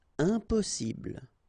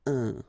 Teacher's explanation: when you add this EM at the beginning of all the words, you will get the nasal sound un. Okay, you don't pronounce the M, but it goes like un.